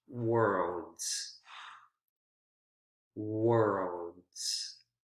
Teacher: worlds r l d and then because remember with the s when s uh is followed by d consonant sound it has that that z z z consonant sound pronunciation is voiced